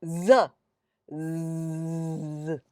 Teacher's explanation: Z. Immediately you'll feel the vibrations. That is voicing.